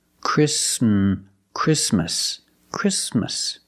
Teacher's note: The T is between consonants, so it is silent. Link the sound s with the m.